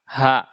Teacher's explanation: Hi seperti huruf ha. Dia makhrajnya di pangkal tenggorokan.